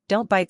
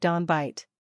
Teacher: Sounds like don bite. Cut that T. No puff. T becomes D. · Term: Stopped T